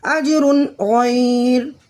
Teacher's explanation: دیکھیے جیم حرف قلقلہ میں سے ساکن حالت میں کلمے کے درمیان میں آ رہا ہے، تو یہاں قلقلہ صغریٰ ہوگا، اور را کی 2 پیش کی تنوین کے فوراً بعد حرف حلقی کا 5واں حرف غین آ رہا ہے، تو ہاں یہاں اظہار حلقی کا قاعدہ ہوگا، غنہ بالکل نہیں کریں گے۔